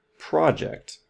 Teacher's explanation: the stress is at the beginning here